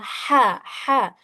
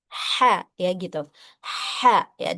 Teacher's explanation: seperti ada hembusan napas halus atau desahan sedikit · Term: huruf H kecil